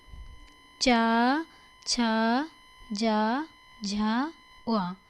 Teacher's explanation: अपनी जीभ तालू में जाकर लगती